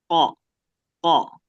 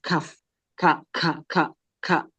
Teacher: Kalau kaf dia masih ada keluar udara tuh lebih banyak udaranya.